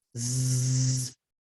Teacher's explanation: on your on your throat like this while you're going zzzzzzzzzzzz you'll notice your vocal chords are vibrating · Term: voiced sound